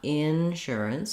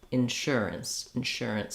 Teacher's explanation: the in, is straightforward. It's just like the word in, but you don't want to be long on it. Not insurance, but insurance, insurance.